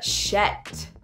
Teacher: The further north that you go, you're also going to hear shet. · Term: Scottish accent